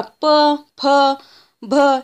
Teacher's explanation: तर ओष्ठ्य व्यंजन कसे ओळखायचे, जेव्हा जे व्यंजनाचा उच्चार करायचा आहे किंवा ज्या वर्णाचा उच्चार करायचा आपल्याला, तेव्हा आपले जे लिप्स असतात किंवा ओठ असतात त्याचे एकमेकाला टच होत असतात। आता बघा, प, फ, भ यांचा जेव्हा आपण उच्चार करतो तेव्हा आपले दोन्ही लिप्स एकमेकाला टच करतात